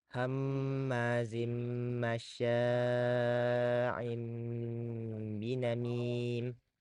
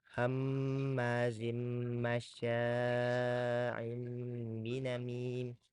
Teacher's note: maka cara membacanya diubah menjadi mim dengan tempo gunah yang diperpanjang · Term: iqlab, iklab